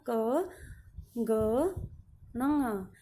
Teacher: सबसे पहले अल्प प्राण, इनके उच्चारण में कम मात्रा में वायु हमारे मुख से बाहर निकलती है